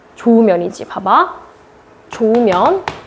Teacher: 히읗이 있었는데 날아간다는 거예요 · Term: 히읗 탈락